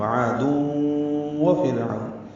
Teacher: وعاد ہونٹوں کی نا تمام گلائی سے ادا ہوگی، عین وسط حلق سے ادا کریں گے، الف مدہ ہے، 2 حرکات لمبا کریں گے، تنوین کے بعد واو آنے کی وجہ سے ادغام ناقص مع الغنہ. وعاد وفرعون، فرعون میں را باریک ہے فا کی زیر کی وجہ سے، واولین ہے، ہونٹوں کو آگے لائیں گے، گول کریں گے، عین وسط حلق سے ادا کریں گے، نون کو معروف طریقے سے پڑھیں گے.